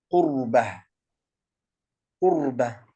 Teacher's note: فالراء ساكنة سبقت بضمة يعني أن تكون مفخمة، هذه الراء تكون مفخمة.